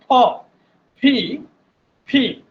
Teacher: এইটা প্র্যাকটিস করার আরেকটা ওয়ে আছে, আপনার সামনে কোনো পেপার দিয়ে, এভাবে পেপার দিয়ে যদি এই ফটা, টু লিপস টুগেদার, দুইটা ঠোঁট লাগিয়ে উচ্চারণ করেন, দেখবেন যে আপনি যতবার বলবেন আপনার মুখ গহ্বর থেকে একটা জোরে বাতাস বের হবে।